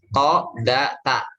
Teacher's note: Ini, jadi untuk gampangnya yang ujung lidah nempel dengan pangkal seri atas